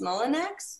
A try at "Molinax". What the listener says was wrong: Yeah, but the X is silent, so it's like Molino.